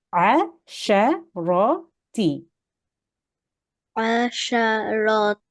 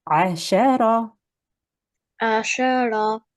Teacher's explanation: It's no longer a ta. It becomes a ha sakin.